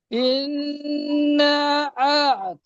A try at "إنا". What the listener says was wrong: ইন্না টান কম হয়ে গেছে, ইন্না টান কম হয়ে গেছে, মাদ আছে, মাদ্দা মুনফাসিল।